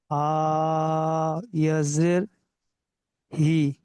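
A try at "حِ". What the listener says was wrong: ইয়া মাদ্দার পরে আগে টান দেন । হাই ইয়াজের হি।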